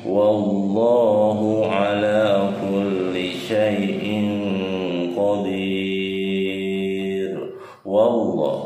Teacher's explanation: itu lam jalalah tafhim karena diawali dengan fathah ya, itebal.